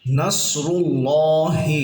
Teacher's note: এখানে রটা মোটা হবে, রুল্লাহ আল্লাহ শব্দের লামটাও মোটা হবে